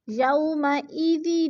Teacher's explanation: واو ساکن سے پہلے یا کے اوپر زبر ہے تو وولین کو لمبا بھی نہیں کرنا اور جھٹکا بھی نہیں دینا